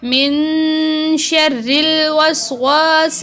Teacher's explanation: الہ الناس، من شر، یہاں میم نون ساکن ہے، نون پر غنہ ہوگا، اور را باریک پڑی جائے گی کیونکہ را کے نیچے زیر ہے، اور یہاں نون پر غنہ دوبارہ کیا جائے گا جیسے اوپر کیا گیا۔